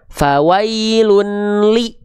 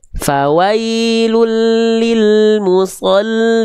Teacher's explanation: Tapi fawailul n-nya udah enggak ada, udah masuk ke huruf lam berikutnya. Fawailul ya. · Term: idgam bilagunah